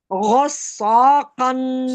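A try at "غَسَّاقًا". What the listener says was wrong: सौ नहीं, सा सीन है। गइन को थोड़ा मोटा पढ़े, गस गस।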